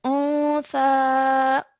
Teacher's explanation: So when we produce the noon sound over here, we do so with a partial nasal sound, holding it in our noses for 2 seconds